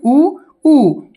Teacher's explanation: स्वर वर्ण जिनके उच्चारण में होठ गोल हो जाते हैं उन्हें वर्ताकार स्वर कहते हैं